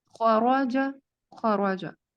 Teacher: خورجہ میں دیکھیں کہ خو بھی پر ہے اور رو بھی پر ہے, تو یہ اسی طرح سے ادا کیا جائے گا خورجہ خورجہ.